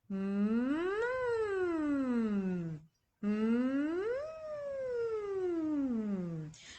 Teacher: cuando vamos a pronunciar la letra M naturalmente va a salir por la nariz, pues ya que tenemos la boca cerrada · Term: naturalmente nasal